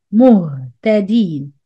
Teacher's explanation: Again, the ha ساكن not easy. 50% air, 50% sound.